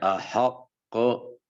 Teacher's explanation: ہو اور ان کے اوپر شد بھی ہو، مشدد ہو، تو تشدید کی تاخیر کے بعد جو ہے وہ قلقلہ ظاہر ہوگا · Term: قلقلہ مشددہ